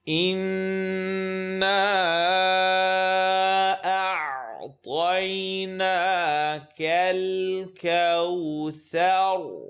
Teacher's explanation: Noon, full nasal sound